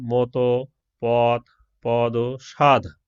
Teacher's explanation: জিভের সামনের অংশ উপরের পাটির দাঁতের নিচের অংশকে স্পর্শ করে দন্ত ধ্বনিগুলো উচ্চারিত হয়।